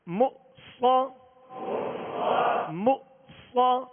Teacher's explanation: صاد کو پر پڑھنا ہے اور صاد حروف مستعلیہ ہے، اس میں سیٹی کی آواز ہوگی. مو صا، مو صا.